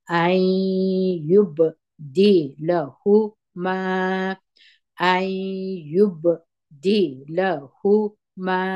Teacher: ای دا غونه اصلي ده، دا نون ساکن ده، مګر دلته نون مشتاسي د یا په اواز وایو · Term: ادغام د غونې سره